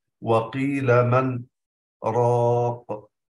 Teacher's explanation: قطع الصوت على النون مقدارا من الزمن يسيرا، مقدار حركتين دون تنفس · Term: السكت